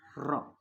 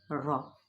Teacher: را یہ ہو گئی زیادہ تکرار، را یہ ہو گئی ہلکی سی تکرار، بس اتنی ہی، یعنی قدرتی لرزش اس کے اندر باقی رہے۔